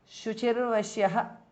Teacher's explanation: Shuchihi visarga changes to repha vashyaha shuchir vashyaha because of sandhi.